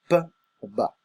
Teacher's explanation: lo único que requerimos es hacer uso de ambos labios, labio superior como labio inferior, P, B. Continuando con esta tabla, tenemos los sonidos labiodentales.